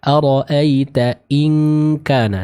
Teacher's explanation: in kana ikhfa bertemu dengan huruf kaf maka sempurna dengungnya dibaca dengan eng ya